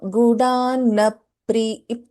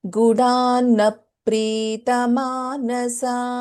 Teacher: So here in Gudanna Pritamanasa, we have na and na, right? And also next letter we have pa, and here pa is getting doubled. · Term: dvitvam